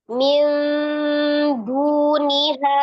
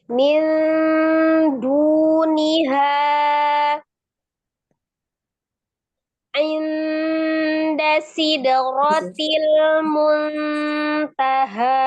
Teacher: Ya, jadi lebih mendekati bunyi huruf N ya. Jadi bukan ming dibacanya, bukan juga mil, tapi mendekati makhraj huruf dal ya. Jadi di huruf nunnya Ujung lidahnya udah di huruf makrot da ya Bu saja. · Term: ikhfa